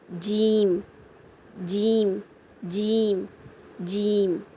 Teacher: உங்கள் நடு நாக்கால் மேல் அன்னத்தை தொட்டு சொல்லணும்